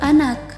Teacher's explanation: Distribusi fonem N pada kata ini berada di tengah kata. Fonem M dan N ini masuk ke dalam bunyi nasal, yakni bunyi yang dihasilkan oleh resonansi yang terjadi pada rongga hidung.